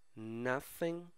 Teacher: voiceless th é aquele que não vibra